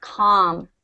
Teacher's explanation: We don't emphasize the L in calm.